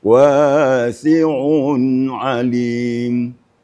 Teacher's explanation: Kalau gak ditekan ainnya, dijelaskan ain yang kedua, maka dia akan bisa hilang oleh ain yang pertama.